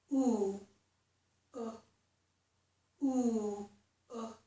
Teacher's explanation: oo is a tense vowel. That means that the muscles in my mouth and tongue are tight. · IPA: /u/